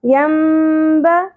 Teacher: یہاں پر اقلاب ہوگا نون کی اواز کو میم میں بدلتے ہوئے پڑھنا ہے اس لیے یہاں پہ چھوٹی سی میم بھی لکھی ہوئی ہوتی